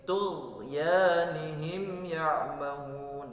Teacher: jangan sampai dilepas ghainnya ya, jangan sampai dipantulkan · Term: huruf ghain sukun